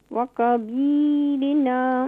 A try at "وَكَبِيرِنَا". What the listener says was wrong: كاف کو اور بھی لائٹ کریں. وكبيرنا.